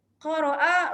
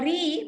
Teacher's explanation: Ra sifat dia dalam ilmu tajwid, ra bersifat tebal dan ra bersifat nipis. Qara'a, ra baris atas ya, fathah, ra bersifat tebal, tafkhim. Kalau ri baris bawah ya, bersifat tarqiq, nipis.